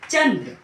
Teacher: ठीक है, इसको बोलने में हमेशा वायु जो है केवल नाक से मुंह से बाहर आती है, नाक से बाहर आती है। अनुस्वार में हवा जो है वो नाक से बाहर आती है